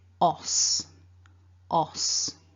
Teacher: The second syllable then, we've got a short O vowel and the unvoiced S.